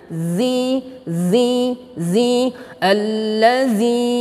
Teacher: ujung lidah dengan ujung gigi seri atas